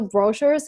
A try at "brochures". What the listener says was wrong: I cannot say brochures. We move the stress, and we move the stress to the second syllable, brochures. We have to put the stress on the second syllable. I cannot say brochures. We have to put the stress on the second syllable, brochures.